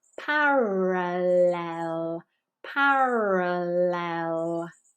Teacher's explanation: helping schwa here meal Hill parallel meal Hill parallel notice that the L before the vowel here is a clear L we're not raising the back of our tongue